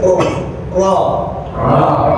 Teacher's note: Orang kalau getarnya kelebihan tandanya lagi sakit yaitu get. Tapi jangan banyak-banyak getarnya. R dikit aja.